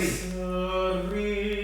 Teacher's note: Jadi berseri, suku kata se itu intensitasnya lebih kurang daripada ri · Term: Aksen di ri